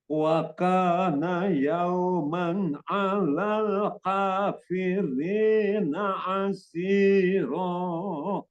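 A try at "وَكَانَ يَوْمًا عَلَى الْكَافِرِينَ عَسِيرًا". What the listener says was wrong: Sedikit hati-hati di kaf ya. Kaf itu sebetulnya gampang, namun kadang-kadang kita terbawa seperti kof. Hati-hati dia jadi kayak kof ya. Wa kana yauman 'alal kafirina 'asira.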